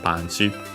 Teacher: The accent is still on the pa, like in English